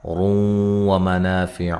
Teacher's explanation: یہاں نون تنوین کا ادغام مع الغنہ ہے اور را موٹی ہو رہی ہے، را کے اوپر پیش ہے۔